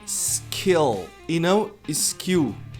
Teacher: A palavra começa com s. A gente tem uma tendência a colocar uma vogal antes.